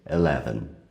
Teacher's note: A gente tem a tendência a falar eleven, mas é um pouco mais sutil. A gente quase não pronuncia o som do E no começo, eleven